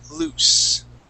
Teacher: and the S is voiceless. Okay, we also call that an unvoiced S.